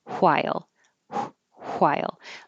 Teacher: We just skip it. In the past, yes, Americans did pronounce that H, and it was with more airflow, while, while, but we don't now.